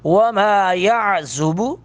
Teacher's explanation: عین کو حلق سے ادا کریں گے، زا کو سختی کے ساتھ ادا کریں گے